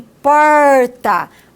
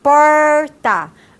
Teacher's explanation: o que que acontece com a ponta da língua ela faz até uma curvinha em direção a palato porta então nós temos esses dois articuladores a ponta da língua · a ponta da língua é o articulador ativo e o articulador passivo é a parte posterior do palato duro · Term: R caipira